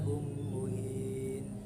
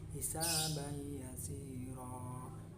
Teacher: harus dibaca dengan dengung sepanjang 2 harakat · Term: idgham bil ghunna